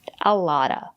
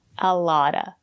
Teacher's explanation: The letter T is between vowels. We pronounce it as a fast D.